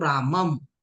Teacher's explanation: आपण अगोदर अ उच्चारण करतो आणि नंतर अनुस्वारा उच्चारण करतो